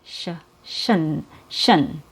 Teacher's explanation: The last syllable also has a schwa sound, and it has an SH sound before the schwa. So we make the last syllable with an SH and then a schwa and then an N. Sh, shun, shun.